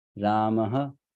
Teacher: The vowel which is coming before this H with dot is the vowel which should also be put after this H with dot. Though it's not there, it's not visible, it should be put after it.